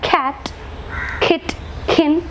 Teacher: we use the back part of the tongue touching the soft palate in order to produce the velar sounds. So the active articulator, again tongue is moving, so tongue is the active articulator, soft palate is the passive articulator.